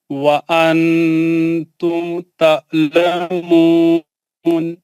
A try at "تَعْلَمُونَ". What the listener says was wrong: یہ آئین کا جو ہے جو جھٹکے سے نہیں پڑھنا. تعلمون نہیں ہے, وہ تعلمون. آپ حلق کے بیچ میں آرام سے پڑھیے, اس کو جھٹکا نہیں ماریے, پڑھیے ان کو.